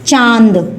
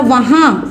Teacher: हवा जो है नाक को छूते हुए आपके मुख द्वार से निकलती है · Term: अनुनासिक